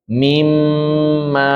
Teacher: ada ghunahnya dua ketukan. Mim ma ada m dua ketukan seperti itu.